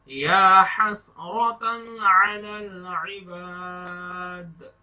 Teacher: دال پر کلکلا دیں گے، جھٹکا دے کے رک جائیں گے